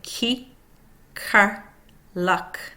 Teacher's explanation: K, unvoiced. Back of tongue hitting the back of throat and stops airflow, releasing it through mouth.